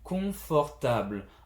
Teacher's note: I go down with the last syllable.